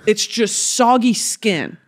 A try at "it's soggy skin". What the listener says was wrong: It's your tone of voice is what's selling you. You're like, it's soggy skin. But if I go, it's soggy, skin. That's exciting.